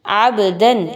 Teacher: با پر جزم ہے، سکون کا نشان ہے اور یہ حروف قلقلہ میں سے ہے، تو ہم اس لیے اس کو ہلا کے پڑھ رہے ہیں